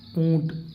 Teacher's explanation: نون غنہ ناک میں بولا جاتا ہے